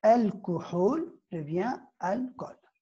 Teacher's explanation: Le ha tombe et elle est remplacée par sa voyelle. · la dhamma, le ou, va se transformer en o. Parce que le son ou donc, est transformé o dans les emprunts.